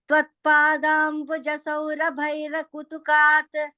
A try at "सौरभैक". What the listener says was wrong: Tvatpadambuja Saura Bhaika Ka sound. Bhaika Kutukat.